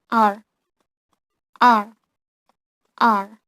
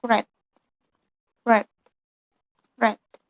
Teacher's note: R sound is liquid rhotic voice on postalveolar coronal place.